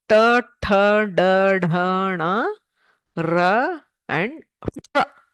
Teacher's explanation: For the pronunciation of these letters, you hit the roof of the mouth, that is the murdha. The tongue actually curls backwards.